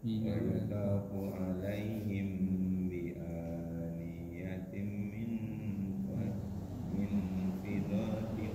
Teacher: Langsung bi aniyatin min Mim ketemu baknya ikhfa syafawi. Ikhfa mim ketemu bak itu ikhfa syafawi. Bilang orang Jawa bibirnya mingkem.